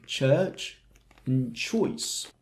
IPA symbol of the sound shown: tʃ